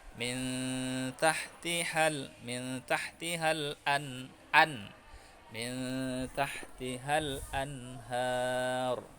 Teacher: Jangan disamarkan anhar, tapi jelas dan pendek. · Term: izhar